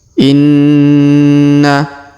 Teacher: huruf na berharokat tasdid, maka kita tahan, kita tekan 2 sampai 3 harokat ya dengan dengung